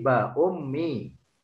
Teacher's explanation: Karena tanwin bertemu mim. Melebur harokat tanwin kepada huruf mim disertai dengungan sekurang-kurangnya 2 harokat. Jadi ba'un menjadi ba'ummi.